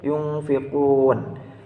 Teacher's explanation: adanya nun sukun yang bertemu dengan huruf fa, dan cara membacanya samar-samar. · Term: ikhfa hakiki